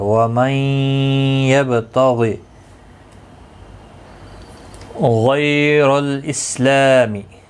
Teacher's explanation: وَمَن نون ساکن کے بعد یرملون کا یا ہے ادغام مع الغنہ ہوگا، با ساکن پر قلقلہ ہوگا، غائن مستعلیہ ہے پر پڑا جائے گا.